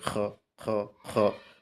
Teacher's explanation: কণ্ঠনালী শেষ অংশ একটু খড়খড় করে